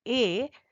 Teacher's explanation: अ का उच्चारण स्थान है कंठ और ई का उच्चारण स्थान है तालू और अ और ई मिलकर बनता है ए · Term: कंठ तालु